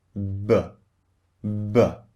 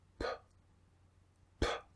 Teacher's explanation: B as in buy and P as in pie. So, one is voiced and the other is unvoiced.